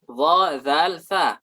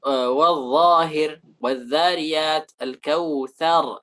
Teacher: ujung lidah dengan ujung gigi seri. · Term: al-huruf al-lithawiyah